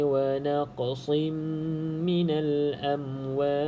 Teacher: huruf qaf ni salah satu daripada huruf Qalqalah jadi perlu ada lantunan